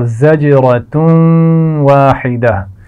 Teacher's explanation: تنوین کے بعد واو ہے تو ہم نے واو سے ملانا بھی ہے اور غنہ بھی کرنا ہے. اور اسی طرح واحدہ، واحدہ الف مدہ ہے اور ہا کو واضح رکھنا ہے.